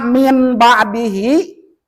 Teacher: Berarti secara pembacaan jangan dibaca n tetapi m. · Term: iqlab